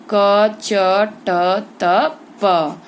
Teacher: क का उच्चारण कंठ से होता है, च का उच्चारण तालु से होता है, ट का उच्चारण मूर्धा से होता है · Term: स्पर्शी